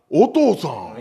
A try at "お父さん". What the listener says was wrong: い や 、 お 父 さ ん ね 、 イ ン ト ネ ー シ ョ ン お か し い 。